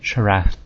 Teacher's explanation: more emphasis on the first syllable